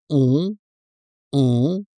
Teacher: So the correct pronunciation is on. This sound is very similar to the one in the word song. So if we remove the first s and the final g, we get almost the same nasal vowel, on.